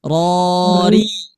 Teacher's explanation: Ro. Nah, ketika harokat kasroh maka sifatnya tipis dengan cara rahang bawah turun